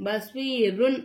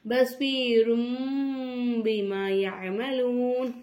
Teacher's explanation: தன்வீனை வந்து நம்ம மீமா மாத்தி உச்சரிக்கணும்